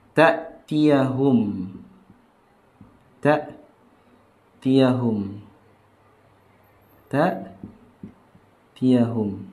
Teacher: Hamzah sifatnya yang pertama adalah ya, jahr. Tidak ada aliran nafas. Ketika kita baca huruf hamzah dan jahar ini sangat menonjol ketika kita sukunkan, matikan.